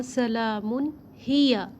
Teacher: ہیا کے ہا کو ہم حلق کے نیچے والے حصے سے ادا کریں گے